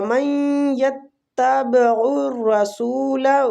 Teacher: من نون جو نون ساکن ہے اس کے بعد یا ہے تو ادھر ادغام مال غنہ ہوتا ہے · را جو فتح کی وجہ سے پور پڑا جائے گا، سو وہ مد کے ساتھ ہے اس لیے کھینچیں گے۔